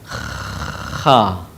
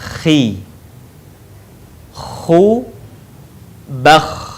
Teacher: Ciri khasnya terdengar suara seperti orang yang sedang mendengkur. Kha. Perhatikan. · Huruf ini dikeluarkan dari tenggorokan yang terdekat dengan rongga mulut kita. Ciri khasnya terdengar suara seperti orang yang sedang mendengkur. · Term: huruf kha